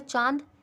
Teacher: इनके उच्चारण में वायु मुख व नाक दोनों से निकलती है